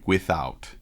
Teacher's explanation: With is strong, and then out is weak. Without. You'll notice that with she makes a little bit longer, and out she robs and steals some time from.